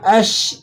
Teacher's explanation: شین کو آپ نے جو ہے ذرا سیٹی کے ساتھ اور باریک کر کے ادا کرنا ہے۔ اشقاہا، قوف پہ کھڑا زبر ہے، اسے ایک الف تک کھینچ لیں گے۔